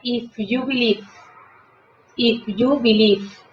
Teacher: Dese cuenta que aquí tenemos la combinación de las dos B, la B labial y la labiodental. Entonces la terminación tiene que ser casi como una F y la E no suena.